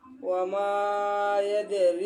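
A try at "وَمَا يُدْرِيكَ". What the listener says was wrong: ইয়াদে আছে, ইয়ার উপরে কি? ইউদ। রি লম্বা আছে না?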